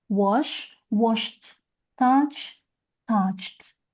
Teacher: if you add ed, you pronounce it as t. So we get touched.